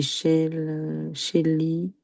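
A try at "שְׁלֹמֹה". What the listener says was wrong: Non, c'est un O. il y a les deux points là, c'est des O. Shelomo. le vrai nom de Salomon, c'est Shelomo. Voilà, son vrai nom, après, ils ont Ils ont changé son nom en français, mais son vrai nom, c'est Shelomo. On retrouve le shalom dans son nom.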